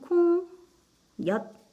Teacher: 콩엿 발음해보면은 콩엿 니은 첨가가 일어났죠. 니은 첨가면서 마지막에 시옷 대신에 디귿으로 발음 났죠. 대표음 디귿으로 나는 것.